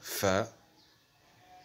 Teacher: Elle se prononce lorsque la lèvre inférieure touche les incisives supérieures. C'est une lettre labiodontale.